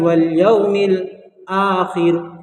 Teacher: ٹھیک ہے دوستو، یہاں آخر جب رکنے کی حالت میں جو ہے را ساکن ہو جائے گا تو را ساکنہ سے پہلے زیر آئے گا تو یہ باریک ہو جائے گی